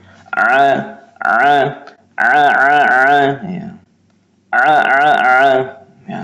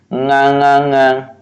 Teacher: Huruf ain ya tenggorokan bagian tengah ya. Membacanya seperti ini.